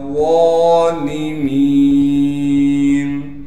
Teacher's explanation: ظالمین واں کو موٹا کر کے پڑھیں گے، پھر واں پر کڑا زبر ہونے کی وجہ سے واں کو ایک الف کی مقدار کھینچیں گے، لام کو باریک کر کے پڑھیں گے، میم کے بعد یا مدہ ہونے کی وجہ سے میم کو ایک الف کی مقدار کھینچیں گے.